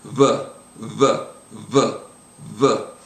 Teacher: the sound it's the sound is v v v v so I'm making a b but I'm not quite touching my lips